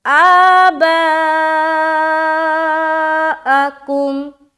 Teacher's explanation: بعض اوقات کنٹرول نہیں ہوتا تو حمزہ بھی کھنچ جاتا ہے، یہ حمزہ کبھی نہیں کھنچتا، یہ جو مد ہے وہ کم ہو جاتا ہے، تو کنٹرول بھی ضروری ہے اپنی آواز میں۔ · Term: آواز میں کنٹرول